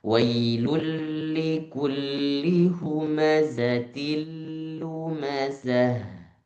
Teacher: jangan sampai ada dengung